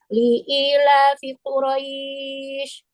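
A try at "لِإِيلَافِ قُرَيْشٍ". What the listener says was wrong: Li-nya jangan dipanjangin. Li'ila. Jangan panjang, langsung. Li'ila. Li jangan panjang. Li-nya jangan dipanjangin, li-nya. Li'ila.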